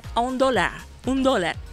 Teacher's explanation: Yo no sé si tú has escuchado en el centro, sobre todo cuando están vendiendo algo los buhoneros, que dice a un dólar, esa R vibrante múltiple que se pierde, se suaviza y si se quiere como que desaparece.